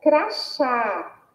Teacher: nós percebemos também que a sílaba tônica é o chá e tem um som aberto